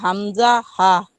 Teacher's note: হলকের শুরু হইতে উচ্চারিত হয় হামজা হা